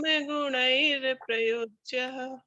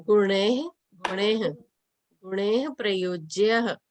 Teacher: गुणे विसर्ग है तो गुणेः आएगा, हा का उच्चारण आएगा